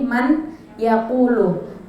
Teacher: man di situ ada nun mati bertemu dengan ya Nah caranya bacanya dimasukkan lalu berdengung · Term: Idgham Bighunnah